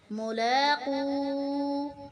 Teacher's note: انہم، نون کو سختی سے پڑھیں گے کیونکہ نون کے اوپر شد ہے اور مشدد حرف کو سختی سے پڑھا جاتا ہے۔ ملاقو، لام کے اوپر کھڑی زبر ہے، اسے ہم ایک الف کی مقدار لمبا کر کے پڑھیں گے۔